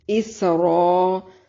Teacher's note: اس سین کو باریک سیٹی کے ساتھ ادا کریں گے۔ را الف مدہ ہے اور مد منفصل ہے، کیونکہ حرف مدہ کے بعد حمزہ دوسرے کلمہ کے شروع میں ہے۔